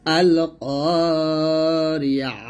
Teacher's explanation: এই তার উপর জবজের পেশ বা দুই পেশ যাই থাকুক এটা একটা হা সাকিন করে ফেলবো যখন আমরা ওয়াকফ করব